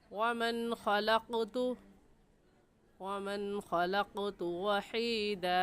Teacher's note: वमन की नून साकिन पर गुन्ना नहीं करेंगे, क्योंकि नून साकिन के बाद हुरूफ हल्की जो कि 6 हैं, हमज़ा हा, आइन हा, गैन खा, उनमें से खा आ गया है, इस वजह से इस नून साकिन पर हम गुन्ना नहीं करेंगे और ऐसे पढ़ेंगे वमन खलक़तु वहीदा।